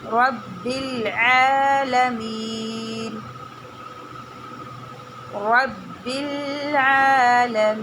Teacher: عین میں چھوٹی مد ہے, اس کو کھینچ کے پڑھنا ہے اور عین کا مخرج نکالنا ہے, اور اس کو اتنا کھینچنا ہے کہ ایک انگلی جو ہے وہ ہماری کھل سکے, ٹھیک ہے.